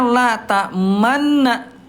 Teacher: Dia dibaca lata manna tapi tetap ada monyongnya. Bisa enggak, Bunda? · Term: ismam